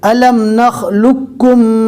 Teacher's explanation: لام کو ڈائریکٹ کاف سے ملانا ہے، جزم والے قوف کو چھوڑ دینا ہے